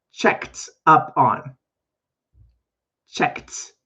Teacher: it's going to have a T sound at the end, even though I write ED.